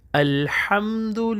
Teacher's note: الحمد للہ پڑھتے ہیں، الحمد للہ، تو یہاں پہ ہم ہا پڑھیں گے۔ الحمد ہا گلے کے درمیان سے نکلے گا، ہا حرف خلقی میں سے ہے